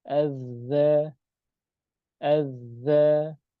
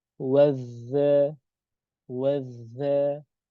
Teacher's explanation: Maksudnya ketukannya dua huruf, ya. Ketika kita mendapatkan huruf zal tasydid, maka ketukannya harus dua huruf.